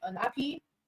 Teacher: So you look for the stress in the main word, not on the prefix. So for unhappy, just know that ha is the stress syllable in unhappy